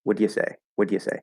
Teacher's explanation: you can drop that schwa and just go from the D to the ya